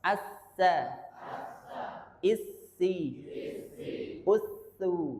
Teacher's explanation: ujung lidah dengan ujung gigi seri atas keluar tiga huruf